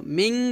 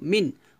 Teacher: নুন সাকিনের পর গইন আসার কারণে আমরা এই নুন সাকিনটাকে স্পষ্ট করে পড়ব। মিম নুন জের মিন, মিন বলবো, মিং বলবো না, মিন বলবো, মিন। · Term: ইজহারের হরফ